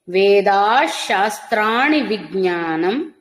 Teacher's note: పలకాలి కానీ ధ కాదు తథా అనకండి. తర్వాత లైను వేదాశ శాస్త్రాణి విజ్ఞానం వేదాశ్ విసర్గ ఇక్కడ కూడా శకారం అవుతుంది